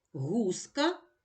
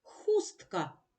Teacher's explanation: г дзвінкий х глухий